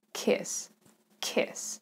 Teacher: Word kiss has a short vowel in the middle, I, kiss, kiss. And it has non-voiced S